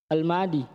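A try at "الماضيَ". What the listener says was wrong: Al-madiyah. Kasih nampak. Fathah nampak.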